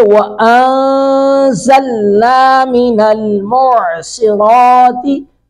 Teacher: عین کو حلق سے ادا کریں گے